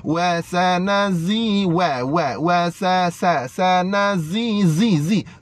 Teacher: Nah, huruf zai sifatnya sofir, bunyi dia macam lebah, macam bunyi lebah.